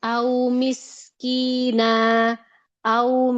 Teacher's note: Jadi sukun sebelumnya fathah dan dia tidak dipanjangkan menjadi dua harakat enggak dipanjangin. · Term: wau lin